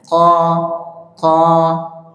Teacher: Bagian belakang ini mau ke tenggorokan, sebelum tenggorokan ada bagian lunak. Nah, di situ huruf qaf menempel. Qa. Tapi jangan terlalu dalam.